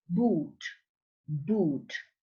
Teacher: is a B that is bilabial